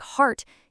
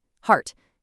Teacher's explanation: But for a low back vowel, like heart, your tongue drops drastically low and pulls all the way back.